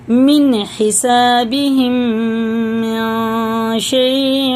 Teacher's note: نون ساکن کے بعد شین آ رہا تو یہ اخفا میں سے ہوتا ہے